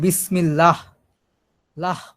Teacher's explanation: বলার পরে হটা যে একটা টান মানে একটা বাতাস বের হয়